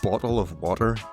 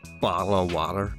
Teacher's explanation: A quick flick of the tongue against the ridge above your teeth.